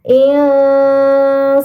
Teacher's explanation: Maka nun sukunnya disamarkan dengan gunnah yang dipanjangkan. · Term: ikhfa hakiki